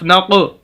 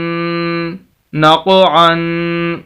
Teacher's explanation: क़ाफ मोटे हरूफ में से हमेशा ही मोटा पढ़ा जाता है, 2 नुक्तों वाला क़ाफ, और ये साकिन है, इस वजह से नून को क़ाफ के साथ मिला रहे हैं।